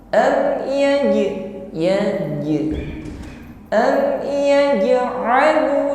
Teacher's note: huruf jim sukun, ada sifat qalqalah yang mengiringinya. Kita pantulkan dengan pantulan yang ringan, qalqalah zuhur.